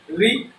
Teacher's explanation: मूर्धा की परिभाषा हमने बताया है कि मूर्धा में स्वरों को उच्चारित करने के लिए हमारे जीभ में या तो मुड़ाव आए या उसमें कंपन हो, उसे हम क्या कहेंगे, मूर्धा कहते हैं। तो मूर्धा में री को बोलने में देखिए कंपन हो रहा है, तो री को हम कहाँ रखेंगे, मूर्धा में रखेंगे।